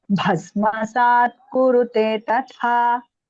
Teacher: Bha is Mahaprana. Tha is also Mahaprana.